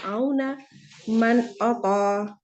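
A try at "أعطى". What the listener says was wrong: طا موٹا ہے. نون پہ اظہار کیا، نون کی آواز کو دبایا بغیر غنہ کے تمام صفات کے ساتھ اس کو ادا کر دیا.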